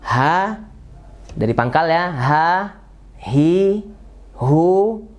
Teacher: yaitu di pangkal tenggorokan di pangkal tenggorokan ya dan mengucapnya mungkin tidak ada dalam bahasa Indonesia Ya mungkin hanya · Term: H besar